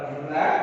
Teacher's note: நம்ம நாக்கோட நுனியை மேல்வாய் அன்னத்தின் முன்பகுதியை தொடுவதால் ர ந இந்த 2 எழுத்துக்கள் கிடைக்கின்றன.